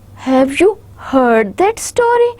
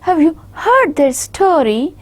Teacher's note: So heard is my stressed word, because I want my listener to focus on what I am saying, what I mean.